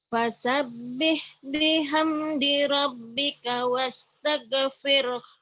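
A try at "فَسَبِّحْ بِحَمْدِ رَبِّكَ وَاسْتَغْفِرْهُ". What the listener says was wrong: Wastaghfir. G-nya jangan wastage, jangan wastaghfir. G-nya pecah, rapuh. Wastaghfir. Ibu guru sakit ghiri. Maghrib, jangan maghrib juga jangan maghrib. Orang Sunda kan keras, maghrib katanya. Maghrib ya.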